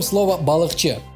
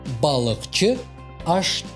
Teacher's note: последние буквы основ этих слов глухие согласные значит и аффикс должен начинаться с глухого согласного